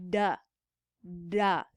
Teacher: we can have airflow be obstructed at the alveolar Ridge right in front of the teeth so duh duh feel where that tongue goes at the roof